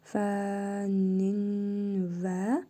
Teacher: Yəni ki, tənvindəki nun hərfini burnumuzda tələffüz edirik. Vav hərfinə isə şəddə verərək oxuyuruq. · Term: idğam-ı məl-qunnə qaydası